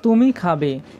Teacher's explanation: কিন্তু এগুলি ছাড়াও বাক্যটিতে আরেকটি ধ্বনি আছে, সেটি হলো সূক্ষ্ম সুরের প্রবাহ, যার কারণে বাক্যটি প্রশ্নবোধক হয়েছে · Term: অবিভাজ্য ধ্বনি